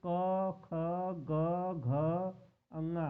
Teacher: कंठ से ध्वनि निकलती है जो उसे क वर्ग के व्यंजक बोले जाते हैं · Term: कंठ व्यंजक